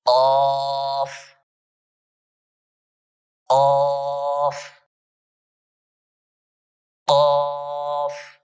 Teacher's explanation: تو یہ جو قاف ہے یہ زبان کی جڑ اور تالو کا نرم حصہ وہاں سے ادا ہوتا ہے. جب زبان تالو کے نرم حصے کی طرف زور کرے گی نا، ایسے اوپر اٹھے گی، تو اس وقت یہ قاف ادا ہوگا